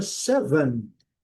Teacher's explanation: O primeiro som tem o som do E curto que nós falamos lá atrás. E o segundo som é o som do schwa.